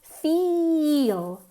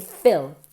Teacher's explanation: Feel es mucho más nasal que fill. Fill, que mandar, o sea, llenar, fill, bajamos la mandíbula, es casi una I mezclada con una E, fill.